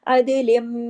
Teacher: اب دیکھیں عدلن ہے لیکن اس کو ہم عدلم، لام میم میں جوڑا کیونکہ آگے میم کے پاس تشدید ہے